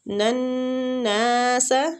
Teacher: نون مشددہ غنہ بھی کریں گے اور نون کو کھینچیں گے بھی